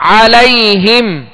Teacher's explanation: عین کو درمیانی حلق سے ادا کرنا ہے